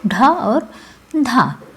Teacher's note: ढा और धा जो है ये महाप्राण ध्वनियाँ हैं